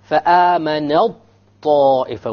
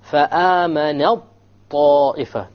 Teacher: The ta is completely dropped. And we merge the noon with the ta, because it is not possible, or it is very difficult to pronounce both of these letters individually.